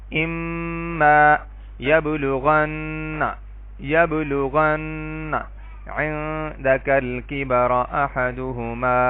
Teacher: نون مشدد اور میم مشدد پر ہمیشہ غنہ کیا جاتا ہے، یعنی آواز کو تھوڑی دیر ناک میں گھمایا جاتا ہے